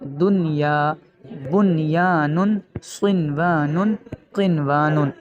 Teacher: ان 4 کلمات کی اسپیشلٹی یہ ہے، خاصیت یہ ہے کہ ان 4 کلمات میں غنہ نہیں کریں گے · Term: اظہار مطلق